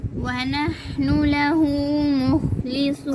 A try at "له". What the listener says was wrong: अपने लहू को नाक में पढ़ दिया, लहू।